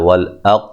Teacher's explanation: کل وا مد اصلی ہے، لیدا دا الف مدہ ہے، والاق قاف کو موٹا ادا کریں گے اور ہلا کے پڑھیں گے، قلقلہ ہے